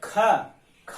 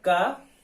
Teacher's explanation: ख अगर बोलते हैं तो देखेंगे गर्म हवा ज्यादा निकलता है, हवा ज्यादा निकल रहा है, अर्थात जोर बल का प्रयोग ज्यादा हो रहा है।